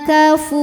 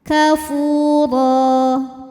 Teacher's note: Fu mad tabi'i zahiri. Sebab ada waw sukun sebelumnya dhammah. Cara bacanya dipanjangkan 2 harokat. Kafura. Huruf ro dibunyikan secara tafkhim karena harokatnya tanwin fathah, maka dibacanya tebal.